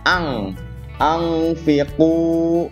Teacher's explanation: Nah, karena ketemunya huruf fa, maka ini ikfa, dibacanya dengung, jadi ang. Ang fiqu.